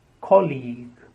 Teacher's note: The stress on the first syllable and the second sound is long E.